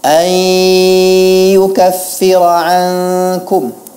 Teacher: Nah, kemudian ayyukaffira ankum, bahwa di situ ada ghunnah. Huruf ya didahului oleh nun sukun, maka dia di situ harus ada ghunnah.